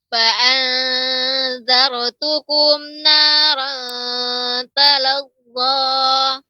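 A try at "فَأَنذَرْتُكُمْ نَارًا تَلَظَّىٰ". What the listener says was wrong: Roknya lebih ditebalkan Ibu. Alhamdulillah sedikit saja tadi koreksiannya yaitu pada huruf ro ya, perlu ditebalkan karena sebelum ro yang sukun ada huruf yang berharokat fathah. Jadi ro sukun sebelumnya harokat fathah, maka tebal ya. Zar ya.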